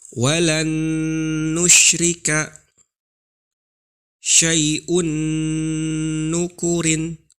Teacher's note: Nun sukun atau tanwinnya dimasukkan ke huruf nun yang berikutnya. Secara otomatis nun yang kedua tersebut menjadi bertasydid.